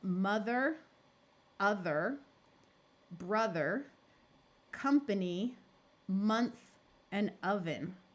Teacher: instead of having the long o sound we have the short u sound of uh · the short u sound of uh or sometimes the I sound the letter O often schwas to an uh sound before the letters t h m n or V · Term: schah sound